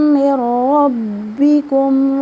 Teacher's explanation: نون کا را میں ادغام ہو رہا ہے. ادغام صغیر متقاربین ناقص نون کا را میں. · را کے اوپر فتح ہے یعنی را مشدد کے اوپر فتح ہے تو را پر پڑا جا رہا ہے یعنی موٹا پڑا جا رہا ہے